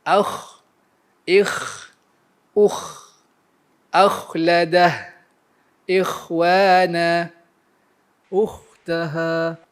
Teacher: Apabila ia sukun, ia akan menghasilkan al-hams.